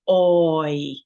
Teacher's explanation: you're saying it all within one impulse of your voice there is one syllable in that oi and that gives us something called the diphthong that ah I